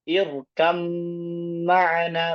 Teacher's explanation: di riwayat kita itu dengan idgham, yaitu memasukkan ba ke mim dengan sempurna.